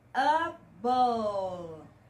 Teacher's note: Quando você pronunciar a letra E deste sufixo, você não vai pronunciar, você vai terminar sua pronúncia no L. Able. Língua atrás dos dentes, tá?